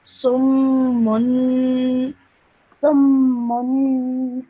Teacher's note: Okay, what you do is because this is shut down top of the meme, you join the previous letter to that, and then you have a tanween on top of that. You have a dhammaten on top of that, so you produce that nasal sound at the end.